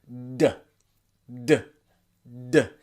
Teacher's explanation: vibrate your vocal cords, build pressure and release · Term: D sound